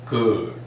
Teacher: in British pronunciation we don't sound that r. In American we sound that r.